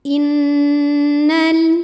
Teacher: Cara bacanya dengung, bunyi n-nya tahan sampai terasa getaran ke hidung kurang lebih 2 harokat. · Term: gunnah musyaddadah